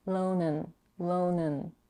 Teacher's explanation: She reduces and, the vowel is reduced to a schwa, and she drops the final D